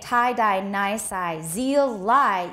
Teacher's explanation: it's either the tongue tip or blade touching the alveolar ridge